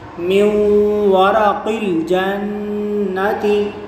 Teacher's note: نون ساکن کے بعد حرف یرملون میں سے واو آ رہا ہے تو یہاں ادغام ہوگا، یعنی گنہ کر کے پڑھیں گے۔